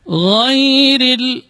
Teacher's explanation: huruf ra-nya dibaca tarqiq, dibaca tipis karena berbaris kasrah